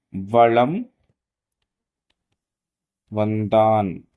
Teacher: மகர மெய்யெழுத்தை அடுத்து வகரம் வருவதால் மகர மெய்யானது தனக்குரிய அரை மாத்திரை அளவிலிருந்து குறைந்து கால் மாத்திரை அளவாக ஒலிக்கும் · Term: மகர குறுக்கம்